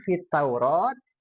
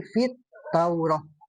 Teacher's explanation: kalau ada tak marbutoh berhenti, maka dibacanya jadi ha, bukan fit Taurat, tapi fit Taurah.